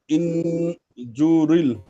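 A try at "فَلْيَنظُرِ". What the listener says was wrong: জু, এই জু টান হচ্ছে, টান হবে না। জুরিল এই যে জু টান হলো, এই টানটুকু হবে না। ফাল ইয়াং জুরিল ইনসান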